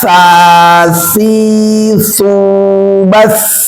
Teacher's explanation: sekarang sa, tempelkan ujung lidahnya ke gigi atas.